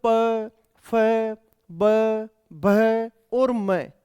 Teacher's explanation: इन 5 वर्णों का उच्चारण करते समय आपको ओष्ठ या होठों की सहायता लेनी ही पड़ेगी। बिना होठों को हिलाए या बिना होठों का उपयोग किए अपन प वर्ग का उच्चारण कर ही नहीं सकते।